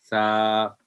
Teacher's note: इसी तरह सा, ये जो जब इस लफ्ज़ को अदा करते हैं तो ज़बान की नोक को सामने वाले ऊपर के 2 दांतों को नरमी से लगाएं तो ये हर्फ अदा होता है